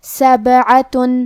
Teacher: کلمت سبعہ میں حرف البا پہ جزم ہے تو ہمیں با کو ہلاتے ہوئے یہ کلمہ کو پڑھنا ہے